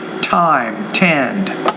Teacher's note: You need to pronounce that T with more air.